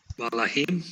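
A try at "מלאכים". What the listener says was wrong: Chim. That kaf is soft. It's ch. Malachim. Malachim. You hear the break in the middle of the word with that aleph? It's not malach, but malach.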